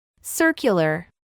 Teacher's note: vemos que la U es pronunciada con un sonido que se asemeja a una I y una U en español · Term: U larga